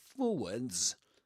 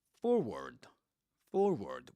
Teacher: In American English, forward. Forward, without the S at the end and pronouncing the R in the middle of the word.